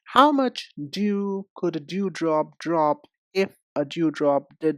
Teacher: when we make a d sound, we do use our voice. Put your hand on your throat and make the d sound.